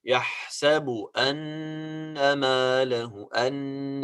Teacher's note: Of course here we have غنة. Why? Because it is noon with شدة.